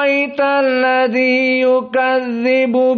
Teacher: maka dia hamzahnya ini yang kedua diganti Alif dan di panjangkan menjadi alisba maka ini qiraah Wars maka kita baca aralladzi yukadzibu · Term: badalul Hamzah, badalul hamzah bi alif